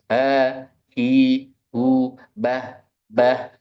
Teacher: Kalau H ketika mati bukan menutup, tapi tetap terbuka. Tapi pita suaranya bergetar saja, Mbah. Dan anginnya tetap keluar.